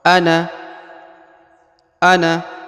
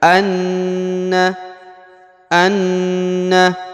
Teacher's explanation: Anna ditahan, ditekan selama sepanjang 2 harokat, lalu didengungkan. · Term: tasdid